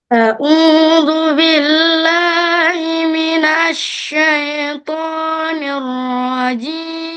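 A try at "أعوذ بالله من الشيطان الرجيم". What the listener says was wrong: Kurang buka sayang. Au. A'udzu.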